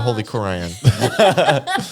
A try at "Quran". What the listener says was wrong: Just the way you said it was, you're like crayon. You said it fast.